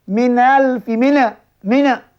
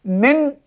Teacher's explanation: makhraj Nun kita tahu di hujung lidah yang ditekankan di gusi atas ada hadapan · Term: izhar